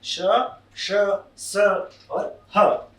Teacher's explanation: और ऊष्म वर्ण, इनको बोलते समय मुंह से गर्म हवा बाहर निकलती है, इसलिए इन्हें ऊष्म कहते हैं। ठीक है, घर्षण पूर्वक गर्म होकर ये ध्वनियां बाहर निकलती हैं, इसलिए इन्हें ऊष्म व्यंजन कहते हैं।